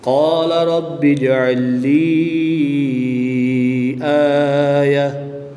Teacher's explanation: گول تا کو وقف کی حالت میں ہا ساکن سے تبدیل کر کے پڑھیں گے